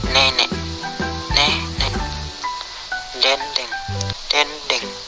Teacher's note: Vokal E. Kriteria: vokal depan, sedang bawah, tak bundar, semi terbuka